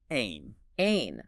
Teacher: There's no equivalent sound in English. It's a guttural sound made deep in your throat. It's almost like a light constriction.